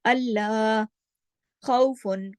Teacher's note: खा को गले से खराश के साथ अदा किया जाता है, खौ, और फिर हैवी भी पढ़ा जाता है।